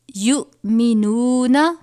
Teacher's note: حمزہ اور جزم ایک ساتھ ہیں تو حمزہ ساکنہ ہے، اس کو ہم جھٹکا دے کر پڑھیں گے